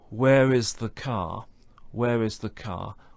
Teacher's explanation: we have no R sound at the end of car because nothing follows